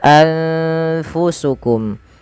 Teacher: nunnya disamarkan kepada Fa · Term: ikhfa